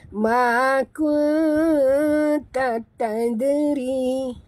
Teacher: Dal mati di tengah kalimah, qalqalah surah.